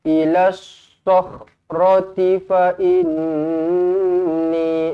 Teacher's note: nun sabdu wajibul gunnah, dua harakat didengungkan